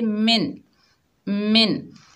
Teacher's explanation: नून साकिन के बाद हरूफ़े हल्की के 6 हरूफों में से ख आ रहा है, यहाँ पर नून साकिन में इजहार होगा। नून साकिन को ज़ाहिर करके पढ़ेंगे, जैसा है वैसा ही पढ़ेंगे